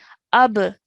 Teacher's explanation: And then over here, you did the sound of qalqala really, really well, okay? Ab, so you produce a bouncing sound on the ba sakin. And then at the end, it was really good as well.